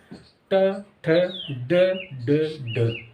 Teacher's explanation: मूर्धा का मतलब होता है जीभ हो उल्टी हो जाए, यानी कि घूम हो जाए, जीभ उल्टी हो जाए, तो मूर्धा।